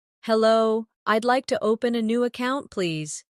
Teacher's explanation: Notice the stress on open and account so the purpose is clear.